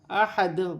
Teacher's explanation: وف کی صورت میں 2 پیش کی تنوین گر جائے گی اور دال ساکن ہو جائے گی